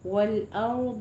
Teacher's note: را کو پر پڑھنا ہے لیکن را پہ قلقلہ نہیں کرنا · را ساکنہ ما قبل فتحہ ہے، را کو پر پڑھیں گے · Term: رائے مفخم